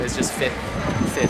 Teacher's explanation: you just ignore the second F. It's just fith.